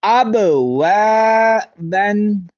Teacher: واو زبر الف وا کو لمبا کریں گے کیونکہ اس کا تعلق حروف مدہ سے ہے